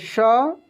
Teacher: तालब्य श का उच्चारण तालु से होता है